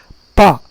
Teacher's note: दोनों अधरोष्ठ और उपरोष्ठ दोनों ओष्ठ आपस में स्पर्श करते हैं, इसलिए इसको कहा जाता है ओष्ठ वर्ण